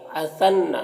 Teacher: نون مشدد ہے، یہاں پر غنہ ہوگا